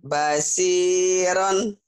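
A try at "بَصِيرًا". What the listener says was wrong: Shinnya nggak keluar tuh. Shin. Bashiron. Shin. Bashi.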